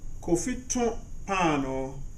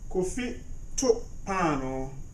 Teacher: When the O in to is pronounced through the nose, it means to bake. When it is pronounced without the O going through the nose, it means to throw. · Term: nasalized